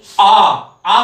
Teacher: विव्रत स्वर बोलते वक्त हमेशा मुखाकृति हमेशा खुली रहती है, यानी पूरा खुला मुंह जिसमें जिन वर्णों में होता हो वो क्या कहलाएंगे, विव्रत स्वर कहलाएंगे।